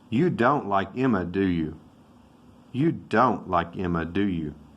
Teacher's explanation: the falling tone means that you have the agreement that you already know they don't like that person